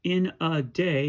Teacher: our anapest is unstressed unstressed stressed